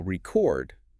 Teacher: If you emphasize the first syllable re e chord, the brain categorizes it as a physical object or a document >> like a vinyl record. >> But if you emphasize the second syllable record, the brain categorizes it as an action >> to record a podcast or a deep dive rather.